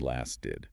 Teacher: That T can soften to a D sound.